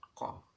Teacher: ini seperti huruf ain, keluarnya dari tenggorokan